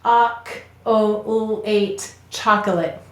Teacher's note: that lazy vowel sound in an unstressed syllable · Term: schwa